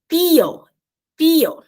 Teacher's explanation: a gente bota a língua entre os dentes superiores e inferiores e fala tio